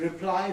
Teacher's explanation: the word reply is always stressed on the second syllable, not on the prefix, whether it's a noun or a verb.